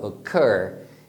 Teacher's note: Eu falo mais forte o final